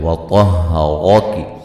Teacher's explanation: فا مد اصلی ہے. وطہرک طا کو موٹا ادا کریں گے، را کو موٹا ادا کریں گے